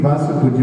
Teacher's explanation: तो वासु पूज्य है, वांसु, वहां पे अनुस्वार आदि कुछ भी नहीं है, इसलिए वासु पूज्य पढ़ना है।